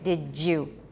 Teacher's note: In the case of did you and don't you, it's also, in addition to palatalization, it's also affrication.